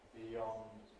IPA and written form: biˈjɒnd (beyond)